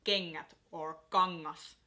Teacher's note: So the G kind of gets swallowed by the N. And the way you pronounce it is similar to the word king or ring.